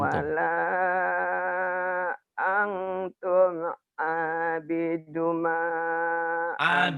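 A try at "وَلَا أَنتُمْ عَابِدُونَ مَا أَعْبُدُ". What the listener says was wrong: Abidu, dunya mah tabii panjang. Abidu, wala antum abiduna ma a'bud.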